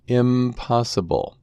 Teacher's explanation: Here the underlying form is still in but the surface form is now im with an M sound